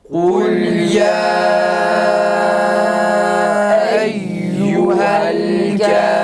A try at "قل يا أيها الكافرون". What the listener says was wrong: Uzatmıyoruz.